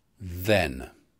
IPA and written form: ðen (then)